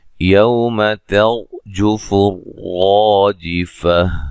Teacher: را ساکن سے پہلے زبر ہے، اس را کو بھی موٹا ادا کریں گے